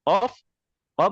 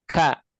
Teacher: Qof qof misalkan ini kaf ka. Makanya qof lebih dalam sebenarnya. Kemudian kaf maju ke depan ya.